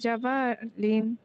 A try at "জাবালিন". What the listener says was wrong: জাবালিন জি টান হবে না জাবালিন জি লাম জবর লা বা জবর বা লাবা নুন দুই জের নিন লাবানিন